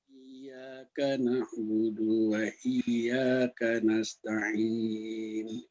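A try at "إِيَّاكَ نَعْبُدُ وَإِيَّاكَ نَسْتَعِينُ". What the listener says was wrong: Baik, boleh lebih ngebut lagi? Iya, karena budunya Pak. Na'budu wa iya, budu wa iya, langsung gitu. Budu wa iya. Jadi dua ini perbaikannya di Maliki Yaumiddin dan budu wa iyyaka nasta'in.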